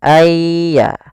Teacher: masukkan nunnya kepada ya Sehingga nunnya hilang tinggal ynya ayya langsung ditasdidkan dia seakan-akan ynya dua yaitu Ya Sukun dan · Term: idgham bi gunnah